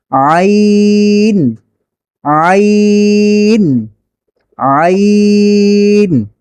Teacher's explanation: কণ্ঠনালীর মধ্যখান হতে আইন উচ্চারিত হয়, গলাকে চেপে ধরে আইন। হাত দিয়ে ধরতে হবে না, বরং আপনি নিজের গলাকে চাপে নিজের গলাকে কি বলে এটাকে চেপে ধরবেন।